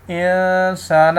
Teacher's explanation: اخفا کی ڈیفینیشن ہے نون ساکن اور نون تنوین کے بعد حروف حلقی، حروف یرملون، الف اور با کے علاوہ کوئی حرف آ جائے تو وہاں پہ اخفا ہوتا ہے۔ اب نون ساکن کے بعد سین آ رہا ہے، نہ حروف حلقی ہے، نہ حروف یرملون ہے، نہ الف ہے، نہ با ہے، تو یہاں پر جو ہے اخفا ہوگا، یعنی کہ غنہ کریں گے